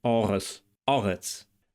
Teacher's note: And the final consonant, tsadi, is pronounced in Biblical Hebrew like an emphatic s, meaning that it's pharyngealized, ts. In Modern Hebrew, it's pronounced ts.